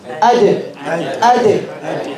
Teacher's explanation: The tip of the tongue is touching the two front teeth. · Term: dal